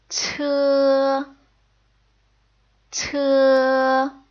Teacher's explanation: strongly aspirated and it's more like the T sound in t see how we're blowing air out as we make the sound T